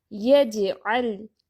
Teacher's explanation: اب جیم ساکن آ گیا تو ادھر قلقلہ بھی کریں گے